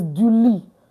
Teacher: Don't pronounce the T. It's du lit.